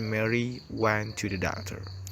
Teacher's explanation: there is additional pitch movement on the primary stressed syllable of doctor. That stressed syllable is perceptually more prominent than the others and will tend to be longer in duration and louder than the others. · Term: tonic syllable